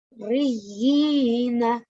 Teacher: So, we need to prolong. It is vertical kasra. So, we need to prolong for 2 seconds. And we can see that it's mushaddad.